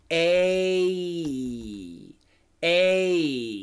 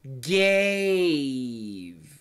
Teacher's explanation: A long A pronunciation, okay? But the long A, the perfect long A is actually a diphthong.